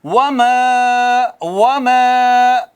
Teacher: وما واو ہونٹ گول کر کے الف مد کر رہے ہیں۔